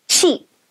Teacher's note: Your mouth should stretch wide with lips tense on that long E sound.